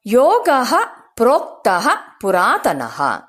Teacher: ಯೋಗ ಪದದ ಜೊತೆ ವಿಸರ್ಗ ಸೇರಿ ಯೋಗಹ ಅಂತ ಹೇಳ್ತೇವೆ